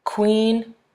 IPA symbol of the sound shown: k'ʷ